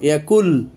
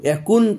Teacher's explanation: নুন সাকিন এরপর লাম এসছে, এখন নুন সাকিনকে দেখেন লামের মধ্যে ঢুকায় দেওয়া হলো, ইয়াকুল, ইয়াকুন কিন্তু বলা হলো না। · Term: ইদগাম নাকিস